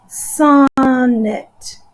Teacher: I know that when I say the word sonnet, I put an accent over the beginning syllable. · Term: stress syllable, stressed syllable